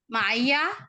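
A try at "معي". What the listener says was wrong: نہیں بیٹا، ہاں مائی، مائیا نہیں کہنا، مائی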